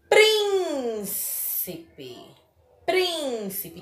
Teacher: Então, prim é a antepenúltima sílaba mais forte.